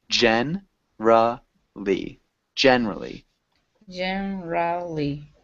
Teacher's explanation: we would have this middle syllable silent